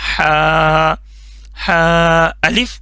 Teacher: Soft वाला हा जो गले के दरमियान वाले हिस्से से निकलता है · سافٹ والا ہا جو گلے کے درمیان والے حصے سے نکلتا ہے. ٹھیک ہے، ہا.